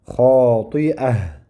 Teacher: Vaqf bo'lganda toy marbuta haga aylanadi. Xoti'ah.